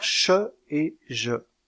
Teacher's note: il y a un resserrement du passage de l'air au niveau du Palais avant avec la pointe de la langue en haut et les lèvres arrondies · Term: constrictives prépalatales